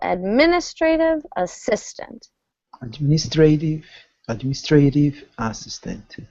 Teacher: stress falls on the second syllable